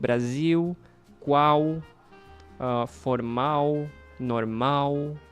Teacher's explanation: if the letter L is the last one, is the last letter in a word, you just make it sound like U